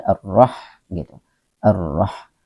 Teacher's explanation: Ha ini tetap ada sifat hamasnya, tetap disertai dengan angin keluar sedikit, ya, ar-roh gitu, ar-roh.